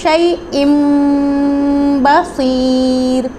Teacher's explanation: تنوین کے بعد با آ گیا ہے تو یہاں پہ اقلاب کا رول ہو رہا ہے، یعنی شیء نہیں پڑھیں گے بلکہ یہ جو چھوٹا سا میم لکھا گیا ہے اس کو شیء بصیر۔